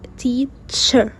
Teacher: Affricates. You combine a brief stop with a fricative.